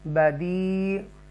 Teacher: یہاں پر یا مدہ ہے اور اس کو تھوڑا سا کھینچیں گے 1 2 3 الف تک